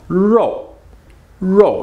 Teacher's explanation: There's that O U. You gotta make that mouth big, then small.